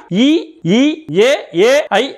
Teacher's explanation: இ ஈ ஏ ஏ ஐ ஆகிய ஐந்தும் வாய் திறக்கும் முயற்சியுடன் நாக்கின் அடி ஓரமானது மேல்வாய்ப்பல்லை பொருந்தும் முயற்சியால் பிறக்கின்றன